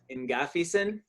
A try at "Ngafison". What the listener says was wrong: Yeah, that's a good try. Yeah, you just silence the N and go just with the G. Yeah, Ngafison.